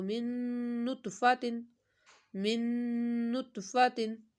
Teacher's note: آ رہا ہے ادغام کا، تو من نطفاتن، من نطفاتن، من، نون ساکن کے بعد نون ادغام کا غنہ کرنا ہے